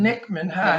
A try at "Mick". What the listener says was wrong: No, Mick. Mick with an M. Mick. Like Mickey.